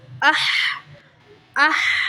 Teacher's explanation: حمزہ حا زبر اح، دونوں کی آواز کو سیپریٹ رکھنا ہے، آ الگ حا الگ